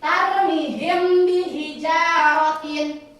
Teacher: Nah, kalau ikhfa syafawi ini huruf mim sukun bertemu dengan huruf ba, maka dibacanya samar, disebut ikhfa syafawi ya.